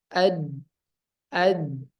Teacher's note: Huruf dal dia sifatnya jahar, napas ditahan. Ya, napasnya dibiarkan ditahan.